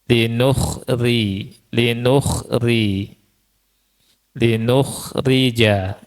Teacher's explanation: Terkait dengan harakat kasrah. Nomor satu ro yang kasrah dibaca tarkik · Ro yang dibaca tarkik itu terkait dengan harakat kasrah.